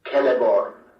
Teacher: For example, a name like Celeborn would be pronounced in Sindarin as Celeborn, with a consonant R clearly heard before the final N